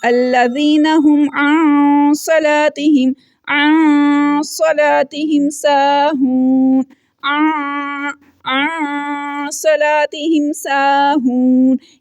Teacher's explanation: नून साकिन की आवाज़ को नाक में छुपा रहे हैं, इख्फा कर रहे हैं।